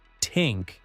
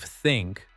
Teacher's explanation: They try to substitute the th sound with sounds they already know. Turkish speakers often use t or s sounds instead.